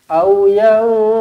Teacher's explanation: Nun kosong bertemu dengan fa, ikhfa hakiki, dengungkan 2 harakat.